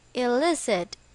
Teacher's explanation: it's pronunciation is elicit with the stress on the second syllable